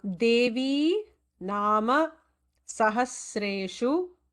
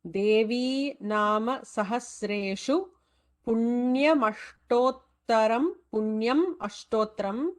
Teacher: Make sure that Devi should be dirgham here. It is not rasvam.